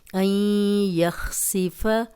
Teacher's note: نون ساکن کے بعد یا ہے، غنہ کریں گے، اور نون میں یا کی بھی آواز آئے گی